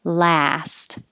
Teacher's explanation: your lips are back and jaw is very open